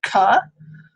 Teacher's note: a voiceless velar plosive, and it is produced without the vocal folds vibrating and with that tongue back or the tongue body making a closure with the velum. So it's hitting up against the velum.